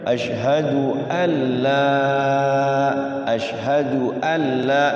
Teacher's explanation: ya masuk ke lam dulu tapi tidak pakai guna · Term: tanpa guna